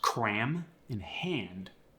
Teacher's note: it's a short a when it precedes an m and an N